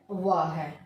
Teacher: तो दंत्योष्ठ जो ध्वनि है वह कौन सी है, व है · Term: दंत्योष्ठ ध्वनि